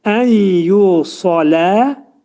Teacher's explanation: Sad hərfinin məxrəci dilin kökü yuxarı qaldırılaraq və dolu şəkildə, qalın şəkildə sad hərfi deyiləcəkdir